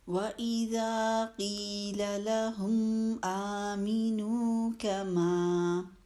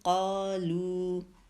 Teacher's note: تو اب یہ مد وہ ہے کہ جب ہم دو الفاظ کے بیچ میں بنتی ہے، جب پہلے لفظ میں ہم نے وقف کر لیا، ہم نے لمبی والی مد نہیں بنائی، ہم نے صرف حروف مدہ کو پڑھا۔ کما میں الف مد ہے، قالو میں لام کے ساتھ واو مد ہے، تو بس حروف مدہ کو پڑھا۔